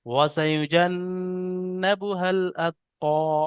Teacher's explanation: হ্যাঁ, এখানে হার পরে আলিফ আছে, তারপরে এই আলিফ, এই দুটো আলিফ সব বাড়তি অক্ষর, ডাইরেক্ট হাটা গিয়ে লামের সাথে যোগ হবে, লামটাকে হায়ের সাথে মিলিয়ে পড়তে হবে